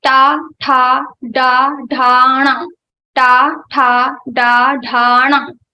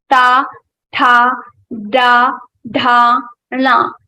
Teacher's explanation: for pronouncing these ta varga letters, you have to touch your murdha with your tongue. So when you pronounce ta varga letters, your tongue goes to your murdha.